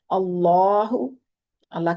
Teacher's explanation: اللہ کے لام سے پیچھے حمزہ پر زبر ہے اس لیے موٹا پڑا جا رہا ہے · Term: اللہ کا لام